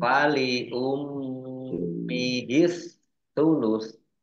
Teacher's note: Mimnya di min tasdid ya dibaca gunnah atau mendengung ditahan 2 harokat